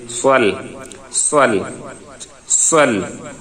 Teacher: সাদের উচ্চারণটা ঠোঁট গোল হবে একটু ফিস ফিস একটি আওয়াজের মতো শব্দ হবে